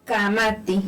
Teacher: Lo que se hace, emites la voz, cierras la glotis, y luego la abres de nuevo. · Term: cierre glotal